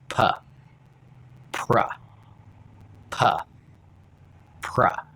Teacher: while my lips are closing for P, they're also going in a little bit to prepare for R sound